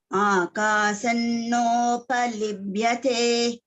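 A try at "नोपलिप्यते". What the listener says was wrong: First pa. No palipyate. It is not third ba, it is first pa. First.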